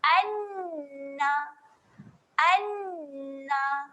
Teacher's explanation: Jadi kita gandakan bunyi bagi huruf nun. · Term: bacaan sabdu